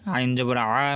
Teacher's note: আইন গলার ভিতরে যাবে